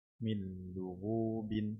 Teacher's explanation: نون ساكنة مدغمة في اللام المضمومة بغير غنة